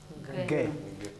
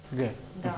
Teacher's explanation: Задняя часть языка смыкается с небом. А теперь убрали эту смычку и произнесли «г».